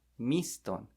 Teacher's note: The O makes the O sound. A very pure O sound.